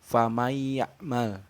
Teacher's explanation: Jadi huruf nunnya tuh gak dibaca ya, langsung dimasukkan ke huruf ya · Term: idgham bigunah